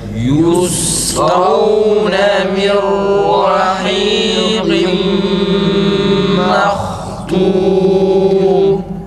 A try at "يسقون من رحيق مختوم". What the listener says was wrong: Harekeli halindeki gibi çıksın arkadaşlar. Meh değil. Meh. Ağzımızı açıyoruz biraz. Mehtum.